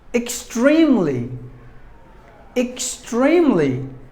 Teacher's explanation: there are three syllables in this word and we have to stress the second syllable